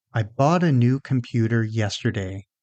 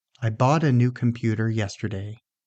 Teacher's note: In this sentence, the important words are bought, new, computer, and yesterday.